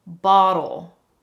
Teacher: So that is what the flap T is. It's just a really quick sound. The tip of your tongue is quickly touching the roof of your mouth. Bottle. Now, some people think of the flap T as a very fast and light D.